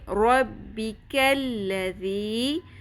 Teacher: ذال نرمی سے ادا ہوگا، بزنگ ساؤنڈ شدت کے ساتھ نہیں ادا کرنا